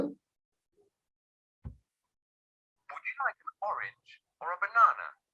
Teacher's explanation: the two kinds of stress over the second syllable in the word banana and over the first syllable of the word orange